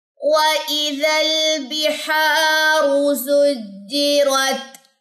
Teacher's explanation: हा की जबर लंबी होगी बिकॉज यहाँ पे अलिफ है, यहाँ पे अलिफ मद्दा का जो रूल है वो अप्लाई हो रहा है, तो हम इसको 2 सेकंड के लिए लंबा करेंगे।